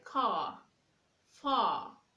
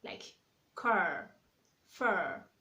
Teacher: when it is American English, you hear the letter R, that is the sound of the R at the end of words